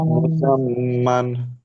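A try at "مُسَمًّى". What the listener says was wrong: মুসাম, এখানে অক্ষ করলে এক জবর উচ্চারিত হবে, মুসাম্মা।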